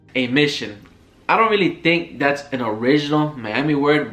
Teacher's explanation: rising intonation, especially at the end of sentences, even when somebody from Miami isn't asking a question